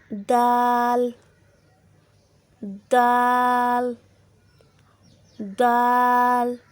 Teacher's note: जब ज़बान की नोक सनाया उलिया के जड़ से लगे तो दाल अदा होता है।